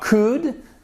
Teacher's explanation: Toujours le L, pardon, ne se prononce toujours pas.